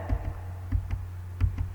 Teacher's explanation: ada nun tasydid, hukumnya adalah gunnah. Maka cara bacanya adalah dengungkan, ditahan dengungnya.